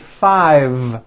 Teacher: I said five with a voiced V